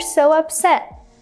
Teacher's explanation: It's a really short w sound.